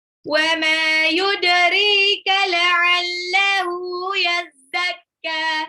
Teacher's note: Yudrika, dalnya ini qalqalah sugro, pantul.